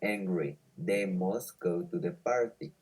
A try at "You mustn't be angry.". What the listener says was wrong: Stop, because you are reading this in affirmative. You are saying you must be angry. So be careful with pronunciation. You mustn't be angry.